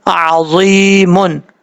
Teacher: عین کو اپنے مخرج سے ادا کرنا ہے، حمزہ کی آواز نہیں آنی چاہیے